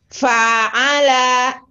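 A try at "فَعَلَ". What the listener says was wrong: Fa'ala. Pendek, Bu. Fa'ala.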